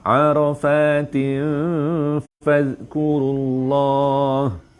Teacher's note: Dengung sengit ready sebut fa, samarkan bunyi nun pada tanwin tin tu tapi dah ready nak sebut fa